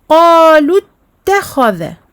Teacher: Donc on emphatise le kha absolument. On appuie sur le ta évidemment avec sa shadda. Ta, kha, dha, et non pas da. · Donc rencontre de 2 soukouns, la prolongation de 2 temps disparaît et nous ne dirons pas qalu takhadha, non, on va dire directement qalu takhadha.